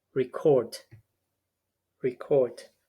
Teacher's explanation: the stress goes to the second syllable and the first syllable is reduced